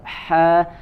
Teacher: Fahaq dari wasatul halqi ya, dari tengah tenggorokan. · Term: huruf ha